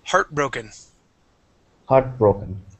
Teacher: So the accent goes at the very beginning of the word.